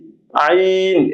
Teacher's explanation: এটা গলায় হালকা চাপ দিয়ে উচ্চারণ হয় হলকের মধ্যখান হইতে। যেমন হাটা আমরা পড়েছিলাম, এখানে যেমন গলা চাপ দিয়ে বলেছি, আইন এটাও গলা চাপ দিয়ে বলতে হবে।